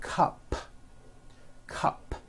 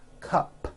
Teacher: It ends with an unvoiced p